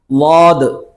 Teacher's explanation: നാവിൻറെ side നീളത്തിൽ കോട്ടുപല്ലിനോട് ചേർന്ന് വരണം